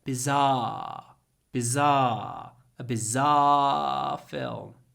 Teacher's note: croaky voice if you can I call it croaky voice bizar so the second half of the sound is not ah with your voice it's ah croaky